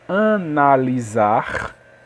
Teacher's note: O S aqui tem som de Z porque está entre a vogal A e a vogal I. Que o I, na verdade, não é uma vogal, né?